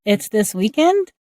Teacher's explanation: Instead, here we are using the same word order but adding rising intonation to clarify we heard correctly